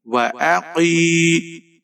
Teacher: قاف کے نیچے زیر ہے، موٹا پڑھیں گے۔ یا ساکن ہے، یا مدہ ہے، ایک الف کے برابر قاف کو کھینچ کر پڑھیں گے۔